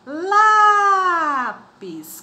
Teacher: Qual a sílaba mais forte? O lá é a penúltima sílaba. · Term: paroxítono